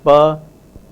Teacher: the bilabial voiceless plosive pa